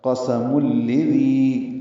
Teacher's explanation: دینا ہے کیونکہ تنوین کے بعد لام ہے تو ادغام ہوگا، یہ ادغام بلا غنہ ہوگا ، قسم الذی، لام کو جلدی پڑھیں گے، دال نرمی سے